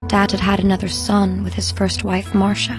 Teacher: in fact the past perfect of have is had had however in normal speech we reduce the first had and we give the second had its full pronunciation